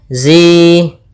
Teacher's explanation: ada hukum tajwid berupa mad tabi'i, kasrah bertemu ya, 2 harakat panjangnya